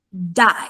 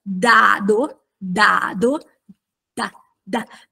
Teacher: la lingua non interagisce più coi denti ma con quelle strutture dure che sono dietro i denti che si chiamano alveoli